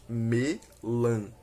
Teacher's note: Agora, a segunda palavra exemplo, que é melancia, que podemos dividir em quatro sílabas, melancia, em que podemos verificar um hiato entre as vogais I e A, que após a separação silábica se encontram em sílabas diferentes, a última e a penúltima.